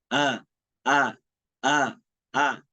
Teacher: ini tempat keluarnya itu pangkal tenggorokan yang paling bawah. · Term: Hamzah